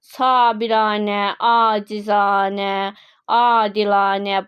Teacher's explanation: Bunların hər birində görürük ki, iki dənə a uzanır.